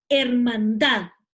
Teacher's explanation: Hermandad tiene su sílaba tónica en la última sílaba